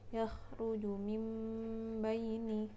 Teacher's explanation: ada nun mati atau Baki pertemuan mati bertemu dengan huruf ba kita baca seperti ada huruf mim mati di sana dan didengungkan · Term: iqlab